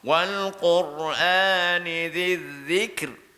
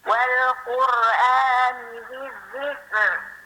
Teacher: Ini matikan 2 huruf sontak. Kaf mati, ra pun mati. Kerana ra yang kita matikan ni pula tipis. Sebab sebelum dia kasrah.